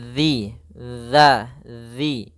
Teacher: ujung lidah kita menempel dengan gigi seri atas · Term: dzal